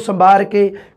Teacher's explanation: ਮਲਵਈ ਦੇ ਵਿੱਚ ਦੇਖਿਆ ਸੀਗਾ ਵੈ ਬੈ ਤੇ ਮੈ ਦਾ ਆਪਸੀ ਰੂਪਾਂਤਰਨ